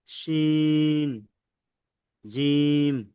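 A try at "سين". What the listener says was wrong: শিন নয়, সিন জিম, সিন।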